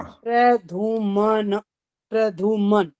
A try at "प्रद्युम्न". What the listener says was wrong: ये ध क्यों बोल रहे हो, ये तो पूछ रहा हूँ। प्रद्युम्न, विद्या वाला जो द्या होता है ना, ये होता है प्रद्युम्न। और सुनो, आपकी गलती यहाँ पर ये वाली, आपका ध नहीं लिखा हुआ है तो द्य, लेकिन गलती फिर भी गलती है। अब एक आंख खोल के देखो क्या गलती है अभी भी।